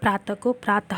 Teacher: इसके उच्चारण में हल्की सी जो ह की ध्वनि होती है, जब हम विसर्ग का उच्चारण करेंगे तो हमें आवाज़ जो है वो ह के रूप में आएगी।